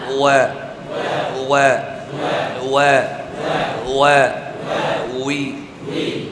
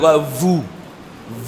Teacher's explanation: ওয়াওয়ের সম্পর্ক ঠোঁটের সাথে, দাঁতের সাথে নয়।